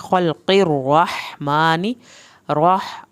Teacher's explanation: रा को पुर करें, हा को हल्क से पढ़ें